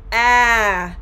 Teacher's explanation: can feel the tongue tip going upwards slightly like i mentioned the jaw is lowered the lips are held apart and the entire middle part of your oral cavity is open wide open